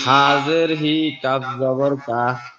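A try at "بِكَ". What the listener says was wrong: না এটা বা। বাজের বি, কাপ জবর কা, বিকা। বাজের বি, কাপ জবর কা, বিকা। বাজের বি, কাপ জবর কা, বিকা। বাজের বি, কাপ জবর কা, বিকা।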